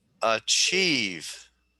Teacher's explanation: The accent is on the second syllable.